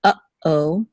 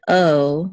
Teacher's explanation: the sound is a separation it's a slight pause it's like when you say in English the word uh oh · like when you say in English the word uh oh you there's a pause between uh and O